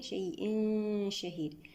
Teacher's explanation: إخفاء حقيقي بغنة مرققة المرتبة الوسطى